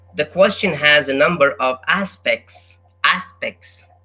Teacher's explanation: The T is not pronounced.